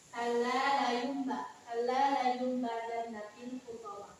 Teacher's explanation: Cara membacanya dengan menggantikan huruf menjadi huruf mim.